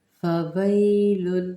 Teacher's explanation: تنوین کے بعد لام مشدد آ رہا ہے، ہم نے اس کے اندر ملانا ہے بالکل اوپر والے طریقے کی طرح. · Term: ادغام